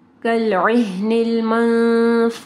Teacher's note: یہاں پہ دیکھیں نون ساکن کے بعد فا ہے ٹھیک ہے، تو اخفا غنہ ہوگا